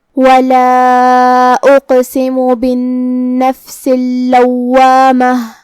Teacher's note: کلمت بالنفس میں نون پہ تشدید ہے، لہذا 2 حرف کے برابر ہم حرف نون کو پڑھیں گے کیونکہ تشدید کی اصلیت 2 حرف ہے.